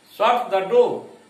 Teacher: यहां पर शट पर अधिक जोर है